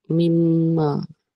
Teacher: Idgham ma'al-ghunnah. Masuk dan dengung.